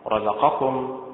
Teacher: رزقكم متعل، النبر فيها على حركة الراء